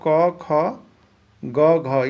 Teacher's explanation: चाहे क का कहे, चाहे ख का, चाहे ग का, चाहे घ का, सबका उच्चारण स्थान कंठ होगा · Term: क वर्ग